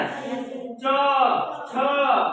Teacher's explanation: इसको बोलने के लिए हमको तालु की जरूरत है, यानी कि मुंह के जो ऊपर का हिस्सा होता है उसमें जीभ जाकर टकराता है, तब इस शब्द का, इस वर्ण का उच्चारण होता है। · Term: तालव्य